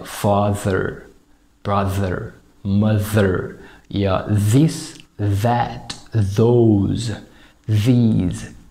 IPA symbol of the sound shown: ð